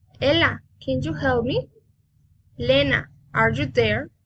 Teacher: direct address rising intonation